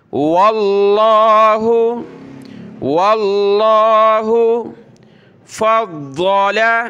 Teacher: واو کو ملایا لفظ اللہ کے ساتھ، لفظ اللہ کو موٹا پڑا۔ واللہ فضل، ضاد فا کو ضاد کے ساتھ ملایا، ضاد کو ہم نے سخت کرنا ہے تشدید کی وجہ سے۔ · واللہ فضل، ضاد فا کو ضاد کے ساتھ ملایا، ضاد کو ہم نے سخت کرنا ہے تشدید کی وجہ سے۔ فا ضاد زبر فض، ضاد زبر ضا، فض لام زبر لا، فضل۔